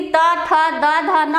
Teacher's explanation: आपका जीभ लगाने से दांत को स्पर्श करता है